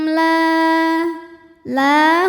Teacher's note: la hukumnya Mad thi'i ziri sebab ada Alif didahului harakat fathah cara bacanya panjang lamnya dua harakat